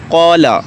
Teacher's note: اس سے پہلے جو قاف ہے وہ بھی مفخم ہے، یعنی اس کو بھی موٹا کر کے پڑھیں گے، تو اس قاف کی وجہ سے یہ الف بھی موٹا پڑھا جائے گا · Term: تفخیم